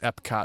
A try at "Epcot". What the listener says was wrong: Yeah, it sounds like you're saying Eb. Just wanted to make sure that it's P, because you said prototype.